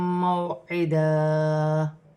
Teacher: واو ساکن سے پہلے زبر ہے واو لین بنے گی اسے کھینچا نہیں جائے گا